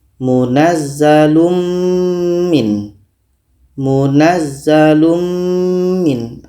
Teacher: Mim ini kita dengungkan secara sempurna. Kita sudah masukkan tanwin ini kepada mim secara sempurna. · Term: idgham kamil